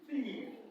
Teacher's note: the voiceless dental sound, or the voiceless dental fricative